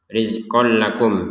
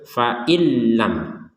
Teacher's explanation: Rizqol lakum, tanwin bertemu lam, ini dimasukkan tanpa dengungan. Fa'il lam, masuk tanpa dengungan.